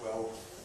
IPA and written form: tweofθs (twelfths)